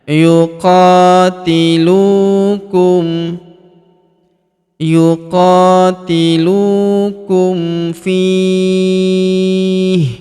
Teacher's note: Huruf lu kita panjangkan dua harakat karena wau sukun di depannya.